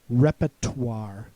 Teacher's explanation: the R in the middle of the word becomes silent. That's usually the way I say it.